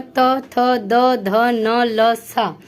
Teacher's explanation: दंत यानी कि दांत, जिसको बोलते समय जीभ हमारी दांत से टच होती है, उसको हम दंत वर्ण कहते हैं